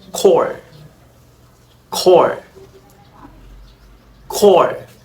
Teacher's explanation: the KW rounded before round vowels like core, core, core. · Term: rounded allophone